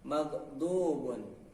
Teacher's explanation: tepi lidah samping kanan atau kiri bersentuhan dengan gigi geraham kanan dan atau kiri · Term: huruf do